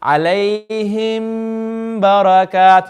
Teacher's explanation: You need to elongate the sound of the mim. Read it with the gunna.